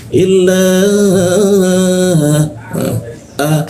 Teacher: alif tanda panjang bertemu hamzah itu muncul bendera dibaca tiga ketukan